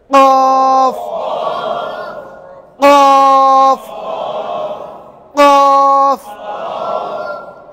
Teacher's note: জিহ্বার গোড়া, জিহ্বার গোড়া উপরে লাগাইছেন, ওখান থেকে কফ কফ কফ কফ। জিহ্বার গোড়াটা উপরে লাগিয়ে সেখান থেকে একটা ধাক্কা দিয়ে বের করেন।